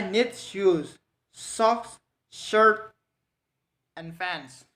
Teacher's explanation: a series of level and rising tones. They end without final drop in pitch. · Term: counting and listening